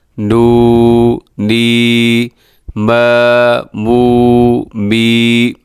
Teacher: کھڑی زبر، کھڑی زیر، الٹا پیش کو ایک الف کی مقدار کے برابر کھینچ کر آپ نے پڑھنا ہے، یعنی اتنا اس کو لمبا کرنا ہے۔